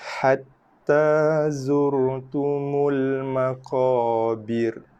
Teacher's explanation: Ini ra dibaca tebal sebab sebelumnya ada baris hadapan.